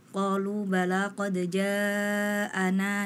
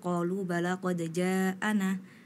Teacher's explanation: tadi itu dibaca qalaq Jaana nunnya tadi dibaca pendek padahal itu Mad thobii zohiri harusnya dibaca panjang dua harakat